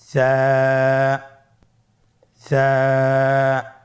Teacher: কোন জায়গা থেকে স্ক্রিনে দেখা যাচ্ছে হারাফটির মাখরাজ হলো উচ্চারণ স্থান জিহ্বার আগা সামনের উপরের দুই দাঁতের আগার সঙ্গে লাগিয়ে উচ্চারিত হয়